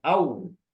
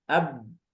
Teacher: Ya, kalau ba itu dengan merapatkan dua bibir. Kalau waw dibulatkan ya au, ya. Kalau ba dirapatkan ab, ya, ab.